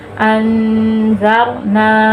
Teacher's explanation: نون کے آگے یا الف ہے، الف حروف مدہ ہے، تو اس کو ہم تھوڑا سا کھینچ کے پڑھیں گے